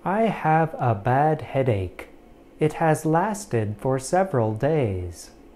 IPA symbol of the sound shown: æ